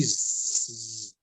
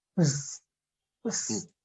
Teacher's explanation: However, now there will be sound behind the s sound. So it will be z.